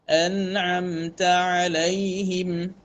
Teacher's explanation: Huruf nun sukun dengan gunnah asliyahnya. Huruf ain yang berbaris di atas tanpa tafkhim. Mim dengan gunnah asliyah.